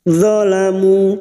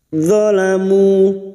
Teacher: Maka dua harakat kita panjangkan. Zalamu tidak boleh lebih dan tidak boleh kurang.